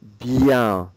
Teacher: So it's a nasal sound on the IEN. And you're doing a good job not pronouncing the N